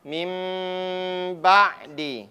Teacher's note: dan huruf ba itu huruf bibir maka ketika dia sebut ini lebih dominan Itu adalah huruf ba yang kedengaran dibandingkan huruf mim mimnya disamar-samarkan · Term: ikhfa